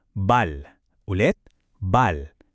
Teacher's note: kapag ito ay nasa dulo as a batchim, palaging mayroon siyang malambot at parang dumadaloy na L sound. Parang L sa salitang ball. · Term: soft L